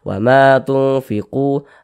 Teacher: Maka disamarkan bunyi nun sukunnya, kemudian didengungkan. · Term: ikhfa hakiki ausat